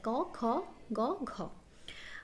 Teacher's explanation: कंठ स्पर्श व्यंजन ध्वनि मतलब गले से निकलता है